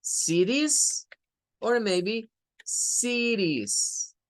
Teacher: we can use the flap, we must use the flap T